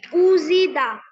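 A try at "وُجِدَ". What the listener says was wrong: উজিদা, খুব সুন্দর হয়েছে।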